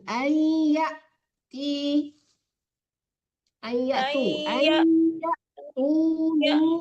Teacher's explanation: Hamzah yang mati dipentokin.